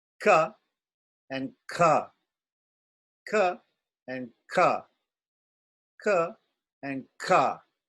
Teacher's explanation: So the difference between these two letters is that the K in the first one has less air. The second one has more air. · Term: Mahaprana